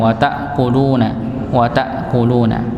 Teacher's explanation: tak dengan bertemu dengan hamzah, maka dibaca dengan tertahan nggih. Wata bukan wata sebagaimana ain.